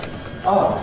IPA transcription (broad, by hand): ʌ